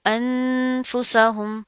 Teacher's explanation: نون کے اوپر جزم ہے، تنوین آ رہی ہے، اس کے بعد کیا ہے، فا آ رہا ہے، تو یہاں پر ہم اخفا کریں گے، غنہ کریں گے